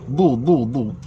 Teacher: huruf dha berbaris dhammah, lidah mesti kena duduk tepi